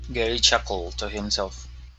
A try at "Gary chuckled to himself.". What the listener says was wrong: There you go.